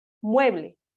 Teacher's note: es una palabra grave porque porque su sílaba tónica recae en la penúltima posición